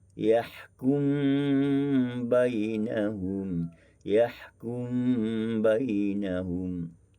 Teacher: idgham kabir dengan memasukkan mim ke dalam ba, maka membaca dengan yahkum bainahum, yahkum bainahum.